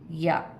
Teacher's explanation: ज़बान के बीच वाले हिस्से से या अदा होगा